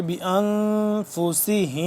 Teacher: نون ہے یہاں پہ ساکن ہے نون، تم یہاں پہ اخفا کریں گے